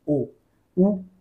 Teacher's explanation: ओष्ठ्य. म्हणजे आपले ओठ जे आहेत त्यांना राऊंड करावं लागतं आपल्याला उच्चार करताना. ओ, उ आणि उ उच्चार ओठांशिवाय होऊ शकत नाही, म्हणून यांचं उच्चार स्थान कसं आहे?